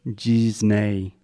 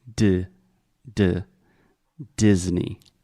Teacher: this is a hard D at the beginning so there's no G or G it is de de Disney